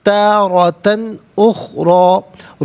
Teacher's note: تو یہ تنوین کو اظہار کے ساتھ پڑھا جائے گا، یعنی غنہ یا اخفاء نہیں کیا جائے گا